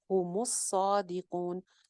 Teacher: मीम को आगे सौद से जोड़ रहे हैं, सौद के ऊपर शद है, सौद मोटा हर्फ है, भरा हुआ हर्फ है और इसके ऊपर खड़ी जबर भी है।